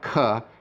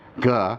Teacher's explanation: So there's a big difference, for example, between a gamma, g, and a kappa, k. You see much more air with the kappa